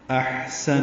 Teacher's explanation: حمزہ کو ہا سے ملائیں گے، حمزہ اقصی حلق سے اور ہا وسط حلق سے ادا ہوگا